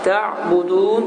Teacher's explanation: Həmçin burada da ayın sükunludur. Və deyişə, əgər ayın sükunlu olarsa bu zaman səs, nəfəs gedir, hava axını gedir. Sonra isə birdən-birə dayanır. Təbudun deyə tələffüz olunur.